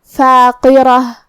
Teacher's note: کلمت فاقرہ میں یہاں قاف ہے، قاف کی ادائیگی زبان کے جڑ اور تالو کے نرم حصے سے ہے، قاف حروف التفخیم میں سے بھی ہے، تو ہمیں یہ حرف کو اور اس کے بعد جو کہ حرف الراء پہ زبر ہے، لہذا یہ دونوں حرف کو موٹی آواز میں ادا کریں گے، فاقرہ تظن ان یفعل بها فاقرہ۔